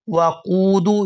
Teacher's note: यहाँ क़ाफ को वाव साकिन के साथ मिलाएंगे तो खींचकर अदा करेंगे